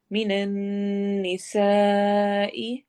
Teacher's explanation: सीन सीटी वाले हरूफ में से है, सख्त हरूफ में से है, मोटा करके पढ़ेंगे, सॉरी मोटा नहीं करेंगे, सीटी की आवाज के साथ पढ़ेंगे।